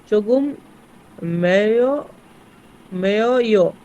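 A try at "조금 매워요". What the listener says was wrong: একবারে বলছিলাম অনন্ত জলিলের মতো ফরফর করে কথা বললে হবে না, অরিজিনাল কথাটা বলতে হবে। ভেঙে ভেঙে পড়েন। মে উও ইও।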